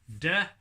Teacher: your tongue in the back of your mouth der the same uses of tongue in the front of the mouth but it doesn't involve any lip movement